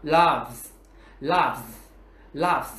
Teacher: Chúng ta sẽ có v là hữu thanh. Vì vậy, chúng ta sẽ đọc cái S, chữ S ở dạng hữu thanh là z